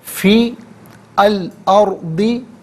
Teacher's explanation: فا کے نیچے زیر ہے، اسے الارضی کے لام ساکن کے ساتھ ملائیں گے، درمیان میں سے الف یعنی حمزہ کو حذف کیا جائے گا، اور ارضی میں را ساکن ہے، ما قبل حمزہ پر زبر ہے۔